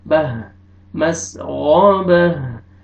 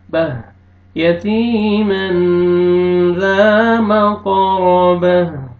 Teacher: नहीं पढ़ना, गैन को मोटा करके पढ़ेंगे, बह वक्फ दूसरे में ता को हा में चेंज करेंगे, हा साकिन हो जाएगा